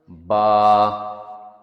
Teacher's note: یہ دونوں ہونٹوں کو ملانے سے پیدا ہوتا ہے۔ دونوں ہونٹوں کو جینٹلی کلوز کریں تو یہاں سے با نکلتا ہے۔